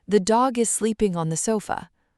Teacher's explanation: In this sentence, the stressed words are dog, sleeping, and sofa. The structure words are the, is, on, the. Listen to how fast they fly by.